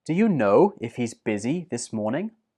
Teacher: had three stressed words: know, busy, and morning